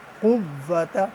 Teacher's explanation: قاف قلم والا ہے، اس کی آواز بھاری آتی ہے